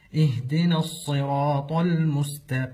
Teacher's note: والصحيح ان حرف الهاء ليس من حروف القلقله · ومن الاخطاء القلقله في حرف الهاء